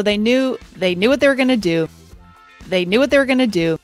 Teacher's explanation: She greatly reduces what. This often happens in words that end in a T, like sit, fort, and can't. · She also pronounces were quite weakly, and going to do becomes gonna do. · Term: connected speech